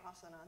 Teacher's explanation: it's consonant vowel, consonant vowel, consonant vowel, and it has all those A's in it, which makes it sound really open and expansive, and you say it, and it sort of fills you with this, like, airiness.